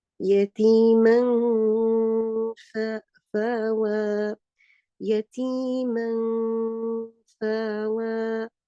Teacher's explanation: I don't touch the makhraj of noon. I hide the sound of noon. So I don't raise the tongue, raise the tip of the tongue, but I get the sound of, I prepare my lips to get the sound of fa.